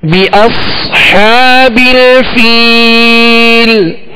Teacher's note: صاد ہے یہاں، صاد کو پر پڑھیں گے مگر سیٹی کی آواز بھی اس میں پیدا کریں گے